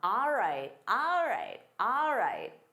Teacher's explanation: instead of saying all right, native speakers commonly say ah. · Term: reducing sounds